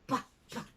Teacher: we aspirate, pa, pa, make an extra blowing sound for some consonants, especially if they are in the last part or in the last syllable.